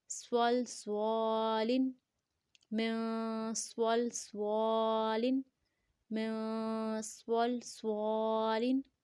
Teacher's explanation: لام دو زر لن، سول سوالن، من سول سوالن، من سول سوالن. سواد کے ساتھ موٹا بھی پڑھیں گے دونوں سواد کو، اور وسل ساؤنڈ کے ساتھ پڑھیں گے.